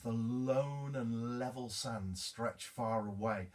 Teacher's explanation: L sounds, which, if you want to know, are laterals, because the sound comes from around the mouth laterally. · So they're lateral sounds. But there's a sense that you linger over those L sounds